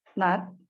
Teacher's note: It's voiced alveolar nasal.